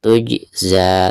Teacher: Tuj, perhatikan ada huruf jim sukun ya, sekaligus posisinya ada di tengah-tengah bacaan, maka dihukumi qalqalah sugro ya, dan cara membacanya itu harus dipantulkan dengan suara pantulan yang standar ya, atau yang tipis. Tujza, seperti itu.